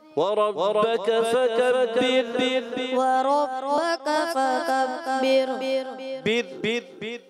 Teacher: ये चारों आयतों में रा बारीक रहेगी